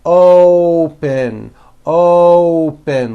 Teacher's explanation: to say this word you're not saying OPP with an a you're using that hidden W you're bringing your lips forward